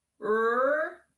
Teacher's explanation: We're going to see this W, but we're not going to say the W sound. We are going to say the R sound. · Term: ghost letter W